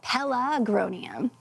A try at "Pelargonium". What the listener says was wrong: No, pelargonium. You're putting the R on the other side of the G. Pelargonium.